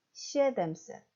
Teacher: 합성명사인 시에뎀셋도 두 번째 대 강세가 있는 게 아니고 에의 강세가 있어서 시에뎀셋.